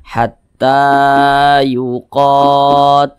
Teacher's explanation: namanya Mad Thobi'i panjangnya dua harakat atau kira-kira dua katukan